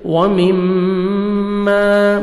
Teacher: میم مشدد غنہ کریں گے، الف مدہ، میم کو 1 سیکنڈ کھینچیں گے